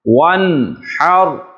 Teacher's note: اب یہاں پر نون ساکن ہے، لیکن نون ساکن کے بعد حروف حلقی میں سے ہا آ رہا ہے، تو یہاں پر اظہار حلقی ہوگا